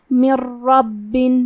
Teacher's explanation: پھر حرف الراء ہے کلمت رب. راء حروف الادغام بغیر غنہ میں سے ہے تو ہم یہ حکم کو بغیر غنہ سے لیکن تشدید کے ساتھ ادا کریں گے